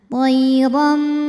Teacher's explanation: Ram hukumnya adalah iqlab, sebab ada harokat tanwin fathah yang menghadapi huruf ba. Maka bunyi tanwinnya diganti bunyi mim, jadi toiram disertai bunyi dengungan.